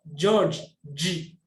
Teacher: ZH itu ujung lidah kita ditekuk ke atas menyentuh langit-langit bagian atas